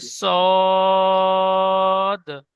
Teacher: 3 আলিফ টান দিয়ে পড়তে হবে।